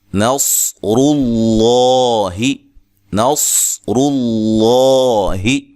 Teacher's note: لفظ اللہ کا لام اور اس سے پہلے حرف پر کیا ہے، اس سے پہلے کیا ہے، پیش ہے، تو اس کو ہم موٹا پڑھیں گے